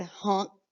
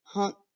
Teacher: You can kind of hear that ng before you hear the K. Hunk. Kind of like your mouth opens up like you're saying that G with the N.